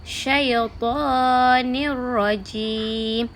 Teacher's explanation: Tanwin gabungkan dengan ra tanpa ada dengung.